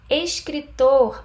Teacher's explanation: escritor a sílaba mais forte é tô